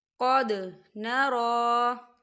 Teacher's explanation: نرى کھڑی حرکات ہے تو اسے 2 حرکت کے برابر کھینچیں گے